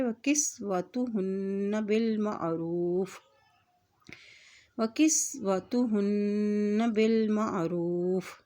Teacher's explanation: راز رزق کا پیش کو رزق کو ہا پیش نون ہن زبر نا رزقہن رزقہن وکسوتہن بالمعروف وکسوہ واضح کاز سین کس وکس واضح وکسوہ تا پیش تو وکسوتو ہا کے پیش کو نون کے ساتھ ملائیں گے کیونکہ نون کے پر شد ہے اور جب نون کے پر شد ہوتی ہے وہاں پر غنہ بھی ادا کیا جاتا ہے